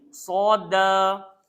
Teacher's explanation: Hujung lidah, langgar belakang. Gigi bawah. So sifat dia tebal. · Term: huruf sod